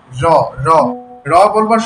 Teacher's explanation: বাতাস বেরিয়ে যাওয়ার সময় জিউভার অংশ বিশেষ বা আলজিউভার দ্রুত ঘন ঘন কাপন লেগে এ ধ্বনি উচ্চারিত হয়। যেমন রবার সময় দেখুন একটা কাপন সৃষ্টি হয়। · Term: কম্পনজাত ধ্বনি